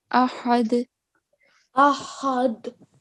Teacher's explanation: the big ha comes from middle of the throat